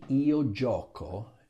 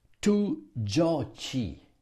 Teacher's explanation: Italians keep the same sound of the C even in the two form. If I just simply had an I, because you know that the ending for the two form is an I, it will sound tu giochi, because C and I in Italian is C. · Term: hard